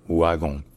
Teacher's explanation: En fait parce qu'en Belgique, il y a beaucoup de mots natifs de belge, où le W se prononce ouë